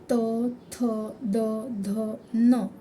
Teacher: जिभेचा स्पर्श हा दाताना होतो म्हणून त्याला दंत्य असे म्हणतात